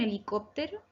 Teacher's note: Pues bien, helicóptero no tiene color porque no es ni aguda ni grave. Es esdrújula porque se acentúa en la antepenúltima sílaba y estas palabras, te cuento, siempre llevan tilde.